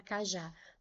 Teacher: Porque ela é uma oxítona. A sílaba tônica é a última.